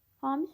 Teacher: Hami sözündə vurğu əvvəldə yox, sondadır. Yəni ikinci hecadadır.